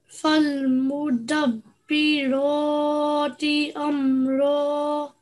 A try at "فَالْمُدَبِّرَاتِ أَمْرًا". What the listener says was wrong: Excellent. That was perfect.